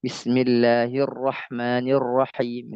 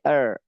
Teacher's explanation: jadi ro itu bergetar, takrir, ya, takrir bergetar